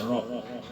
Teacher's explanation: Rnya berbaris fathah berbaris di atas. Kalau baris di atas bacanya takhim tebalkan ro. Ro bukan ra tapi ro. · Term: tafkhim